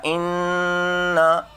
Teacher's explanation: ایک تو یہ ہے کہ نون مشدد ہے اس لیے غنہ ہوگا